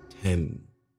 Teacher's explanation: Make sure the N has an NG sound like lung.